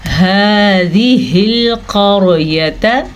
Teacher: ہا کے تلفظ کا خاص خیال رکھنا ہے کیونکہ اس کی آواز سینے میں سے نکلتی ہے. هذه القرية قاف کو پر پڑھیں گے اور را کو بھی پر پڑھیں گے.